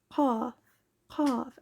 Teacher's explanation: Now the back of the throat rises and touches the soft palate, so qaf, qaf, and you can kind of feel like a little bubble of air behind